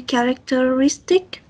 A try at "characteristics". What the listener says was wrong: Nhớ giùm anh là characteristic này là có S thì đằng sau thì em nhấn mạnh chữ S nha. Characteristics.